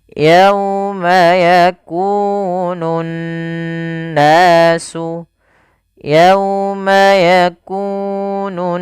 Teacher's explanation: Nah, ini dia ee kita namakan dengan bacaan gunah. Cara membacanya adalah menahan suara n ya sepanjang dua harakat. · Sehingga dinamakan dengan alif lam syamsiyah, yaitu alif lam yang kita tuliskan tapi kita tidak baca huruf lamnya. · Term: gunnah